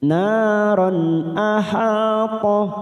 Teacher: Nah fathah diikuti alif 2 harokat, naron. Ron fathah tanwin bertemu hamzah, kita baca jelas, namanya bacaan idhar halki · aha fathah diikuti alif 2 harokat kita panjangkan